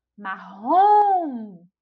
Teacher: a gente já identifica aí que a sílaba tônica é a última sílaba